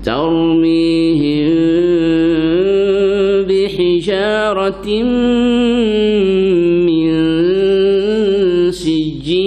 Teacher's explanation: Tanwin bertemu dengan mim. Idghamat gunnah. Ni memang rapat.